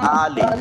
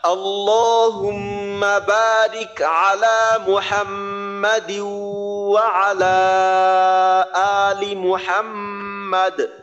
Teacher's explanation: আচ্ছা, অনেকে দেখবেন যে পরে ওয়ালা আলি পরে ওয়ালা আলে, আলে পরে আলে পড়া যাবে না, ওয়ালা আলি, আর লামজের লি, লামজের লে না, লামজের লি